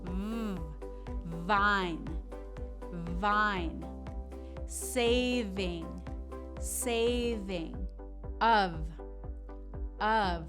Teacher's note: letter v V this sound is similar to f placement wise your bottom lip goes to the bottom of your top teeth and instead of blowing like for f it's more of a vibration